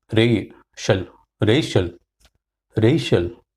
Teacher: Racial is two syllable. The first syllable has got stress, emphasis.